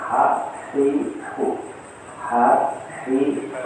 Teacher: tempat keluarnya huruf ha itu di tengah-tengah tenggorokan. Ha hi hu, ha hi hu, ini tengah-tengah ini. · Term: wasatul halqi